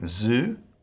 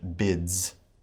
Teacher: can be pronounced as a straight ahead z or z sound like zoo or with a d s sound like at the end of the word bids